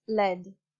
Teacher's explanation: the lack of distinction between the sounds r and l in Hong Kong, Singapore, and some areas of East African Englishes